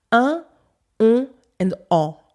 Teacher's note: With my Parisian accent, I only make 3 nasal sounds.